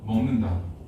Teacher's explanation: 근데 자연스럽게 발음하다 보니까 먹이 먹으로 발음이 나는 게 아니라 먹이 멍으로 발음이 나는 거야.